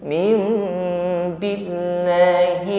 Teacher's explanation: Wa may yu'min, nun sukun bertemu ba, di atasnya ditandai dengan mim, iqlab. Min kita ubah menjadi mim, bibir rapat, sempurnakan dengungnya.